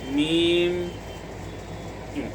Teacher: इसी तरीके पर जहाँ मीम को अदा करेंगे तो दोनों होंठों की खुश्की का हिस्सा यानी जब मीम अदा करेंगे तो दोनों होंठ को मिलाएंगे।